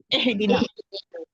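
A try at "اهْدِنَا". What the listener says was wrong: ای کی آواز آنی چاہیے زیر کی، اے نہیں آئے گی، اہدنا،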